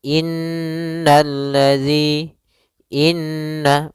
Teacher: sini ada huruf nun yang berharakat tasydid maka cara membacanya yaitu kita menahan suara nunnya suara Nun kita tahan-tahan dulu baru dibaca jangan langsung innalladzi tapi tahan dulu dua ketukan innalladzi Inna maka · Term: gunnah